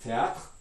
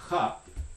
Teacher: that R sound at the end of the word in French, following this voiceless stop, is actually a voiceless uvular fricative